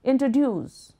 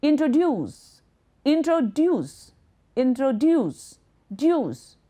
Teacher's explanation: the word introduce is pronounced with a stress at the end